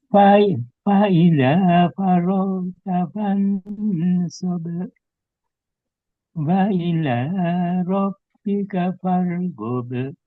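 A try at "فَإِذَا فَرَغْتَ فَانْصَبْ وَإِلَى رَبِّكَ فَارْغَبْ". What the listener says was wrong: pertama roknya Pak perlu ditebalkan ya. Ro ya. Faro faro faro farota.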